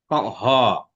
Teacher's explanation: স্বরবর্ণ তো একেবারেই অ, কিন্তু হ, খেয়াল করো, ওটা চেপে আসছে, কণ্ঠ একটা চাপ পড়ে তারপরে হ সাউন্ডটা হয়।